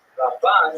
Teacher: Ramban is pronounced with the emphasis on the second syllable